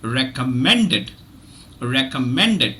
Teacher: have the first syllable has the carries the secondary stress and the third syllable carries the primary stress